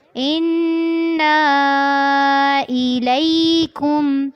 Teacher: اس پہ مد ہے، اس کا دھیان رکھنا ہے. انا الیکم، لام کو یا کے ساتھ ملاتے ہوئے نرمی سے پڑھنا ہے